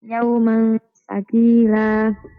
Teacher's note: تنوين بالفتح مخفى عند التاء مفتوحة بغنى حركتين